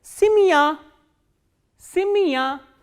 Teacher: when ye is in unstressed position, it is pronounced as e